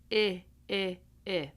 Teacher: The i sound i i i is more relaxed. So your tongue is a little bit lower